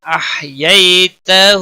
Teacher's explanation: یالین ہے، تھوڑا نرمی کے ساتھ کھینچ کر پڑھیں گے